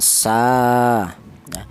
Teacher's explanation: huruf sin ini dibaca panjang ya. yaitu panjangnya satu alif atau dua harakat atau dua ketukan sa seperti itu.